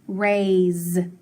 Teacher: listen to that s though raise it makes the z sound